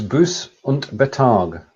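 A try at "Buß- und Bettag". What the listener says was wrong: So the Betag, the gap goes between the 2 T's. It's not a bet.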